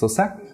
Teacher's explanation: So for example, dấu sắc goes up. It goes up with your hands.